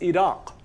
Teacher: it's like k but further back in the mouth the back of your tongue touches the uvula and produces a sound that's not ka but it's why we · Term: uvular stop